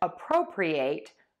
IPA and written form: əˈprəʊprɪ'eɪt (appropriate)